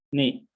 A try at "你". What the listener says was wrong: Oke ya, dua sama tiganya kayaknya ketukar.